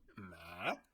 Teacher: This one you just go, you shorten it, and then you make it sound lower. You go ma. It's kind of fun. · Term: low falling broken one